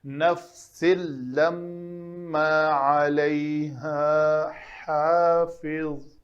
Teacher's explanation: ہا اور ہا دونوں اکٹھے آ گئے ہیں، مخرج دونوں کا مختلف ہے۔